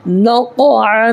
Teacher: نقعا. یہاں بھی قلقلہ کرنا ہے اس لیے کہ حروف قلقلہ کے 5 حرفوں میں سے قاف آ رہا ہے